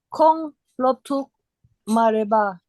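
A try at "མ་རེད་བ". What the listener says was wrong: Mare. Kong loptruk mare. So here is not pa. You have to say wa. Okay? Marewa.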